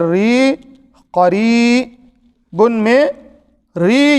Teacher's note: بچوں اس کے اندر حرف مدہ ایک بار آئی ہوئی ہے، را یا زیر ری، قریبن میں ری یہی حروف مدہ ہے، حرف مدہ ہے، اسے ایک الف یا دو حرکت کے برابر کھینچ کر پڑھیں گے